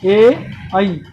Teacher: कंठ तालव्य यानी वो ऐसे शब्द, ऐसे स्वर, ऐसे वर्ण जिनका कंठ और तालव्य से दोनों जगह से उच्चारण होता है